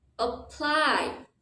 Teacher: for this word your stress is on the second syllable